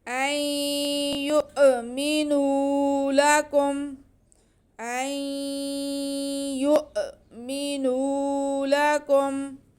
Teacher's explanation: افتطمعون ان یؤمنوا، حمزہ پہ زبر اور ساتھ میں نون ساکن کے بعد یا آ رہا ہے جو کہ حروف ادغام میں سے ہے، ادغام بالغنہ، یعنی کہ ہم حمزہ اور نون کو یا میں ملا کر پڑھیں گے اور غنہ کریں گے۔ نون ساکن کو یا میں ملا کر مدغم کر کے پڑھیں گے اور غنہ بھی کریں گے۔